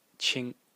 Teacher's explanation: the character pronounced Ching in the first tone